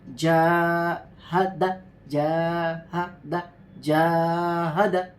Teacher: پہلے والے جا کو ہم نے اس لیے کھینچا کیونکہ اس میں حرف مدہ ہے، الف اس سے پہلے زبر.